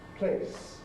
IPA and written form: pleɪs (place)